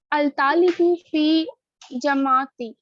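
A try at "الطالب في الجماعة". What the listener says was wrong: فل اچھا یہاں پہ یا نہیں پڑھی جائے گی, ٹھیک ہے, کیونکہ وہ خالی ہے. ٹھیک ہے نا, تو فی کو کہاں جوڑیں گے؟ فی کو آگے لام سے جوڑیں گے. الف بھی خالی ہے, جو خالی ورڈ ہوتے ہیں ان کو نہیں پڑھا جاتا.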